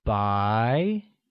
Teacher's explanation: let's learn to say white white translates as by which is pronounced with the mid rising tone